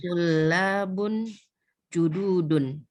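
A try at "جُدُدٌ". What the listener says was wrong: Jududun, nggak ada yang panjang. Bu. Jududun.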